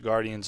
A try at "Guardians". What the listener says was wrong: Did you say? So I think your G went silent. You said Alex.